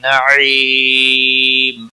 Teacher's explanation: وقف کی صورت میں میم ساکن پڑھا جائے گا، وقف بالاسکان ہوگا